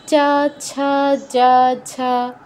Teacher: আপনি খেয়াল করে দেখবেন চ উচ্চারণ করে দেখুন জিওভা তালুতে স্পর্শ করছে। চা ছা প্রত্যেকটার ক্ষেত্রে জিভা একই স্থানে স্পর্শ করছে। তো এদের উচ্চারণ স্থান হচ্ছে আমাদের তালু। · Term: তালব্য বর্ণ